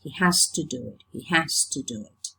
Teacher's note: When you use it in isolation, you pronounce it has. But when in the phrase has to, the voiced fricative z becomes voiceless.